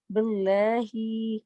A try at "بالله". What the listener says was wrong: لام کو اور لائٹ کرو، باللہ پہ لام بھی لائٹ کرو.